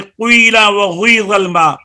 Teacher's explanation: की के नीचे जो जेर है वो पेश की तरफ कुई हो जाएगा, होंठों को गोल करे